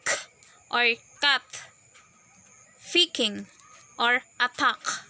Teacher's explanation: And so the sixth place of articulation is the velar. The sounds produced with the back of the tongue and approaching with the velum.